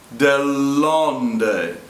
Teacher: We really don't notice the double L too much. The first L is held a little. Dell'onde, as opposed to dell'onde.